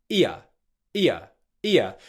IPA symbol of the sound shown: i.ə